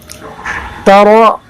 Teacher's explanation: را کو پر کریں گے اس وجہ سے کہ را پر زبر ہے، اور آپ نے را کے قاعدے میں پڑھا کہ را پر زبر یا پیش ہو تو را کو پر پڑھتے ہیں۔